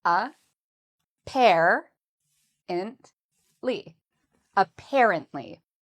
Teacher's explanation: So for apparently, the second syllable is what we say with emphasis. So it's the part we say louder and longer.